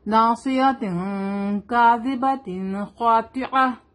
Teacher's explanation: خا حروف حلقی ہے، تھروٹ لیٹر ہے، حلق سے نکلنے والے لیٹر ہے یہ، اور خا ہیوی لیٹر بھی ہے. تو از آلویز ہیوی، خا از آلویز ہیوی، خا پڑھیں گے اس کو، ٹھیک ہے.